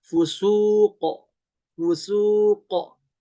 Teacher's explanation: ketika berhenti pada kalimat fusuqo, ini jadi mantul ke suara o. Suaranya menjadi fusuqo, fusuqo, begitu ya, ada pantulan o-nya.